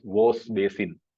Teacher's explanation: So we can see that wash basin has been pronounced as Vos basin. So Sha has changed to Sa.